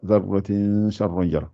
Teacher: on ne dit pas zarratin avec le noun. On fait le ikhfa